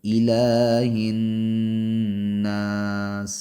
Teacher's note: سکتے ہیں اور ایک الف کے برابر بھی، جیسے الہ الناس، تو الہ حمزہ تحقیق کے ساتھ پڑھیں گے، صرف زیر ہے، زیادہ کھینچیں گے نہیں